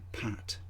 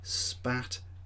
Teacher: It turns out that whether the sound is aspirated or not is determined by what it combines with. So when p is at the beginning of a word and stressed, it is aspirated. When it follows a s, it's not aspirated.